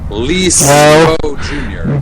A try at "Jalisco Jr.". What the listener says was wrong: J makes an H sound in Spanish.